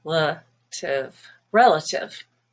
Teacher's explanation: Relative has a stress on the E, the first syllable, which is red. Relative. But the A and the I here are also schwa.